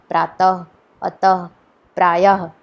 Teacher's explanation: और यह विसर्ग है, इसका चिन्ह, यह दो बिंदु हैं। इसको बोलने के लिए कुछ ह की आवाज़ निकलती है